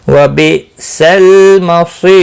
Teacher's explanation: حمزہ ساکن کو جھٹکے کے ساتھ پڑھیں گے